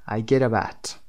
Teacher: سه تا کلمه get up at به هم میچسبن، ت به آ میچسبه و پ به ا میچسبه و میشه I get up at، I get up at 7. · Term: linking